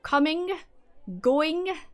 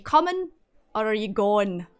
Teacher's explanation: depending on where you are from in Scotland, we have a bad habit of not pronouncing ing. So, coming, going, there's no G there.